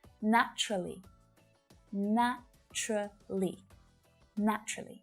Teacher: of my students will pronounce naturally with four syllables right but when a native speaker says this word out loud usually you'll only hear three syllables